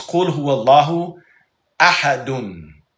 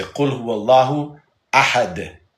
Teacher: We just don't pronounce the dun because it's an Arabic reading rule. When you stop at the end of a sentence, you leave off the vowel. So we say Qul huwallahu ahad.